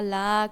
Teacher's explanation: লা কিন্তু টান হবে তিন আলিফ